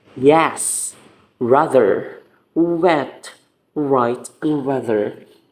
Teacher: the sound is smoothly produced and there is no apparent contact between articulators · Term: approximate consonants, approximant consonants